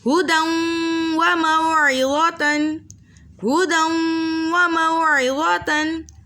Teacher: دو زبر کی تنوین کے بعد ینمو کے متحرک حرفوں میں سے واو آ رہا ہے، دو حرکت کی مقدار غنّے کے ساتھ پڑھیں گے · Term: ادغام مع الغنّہ